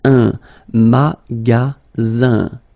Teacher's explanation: the ending here is IN, so it's nasal, goes in your nose, and it's un.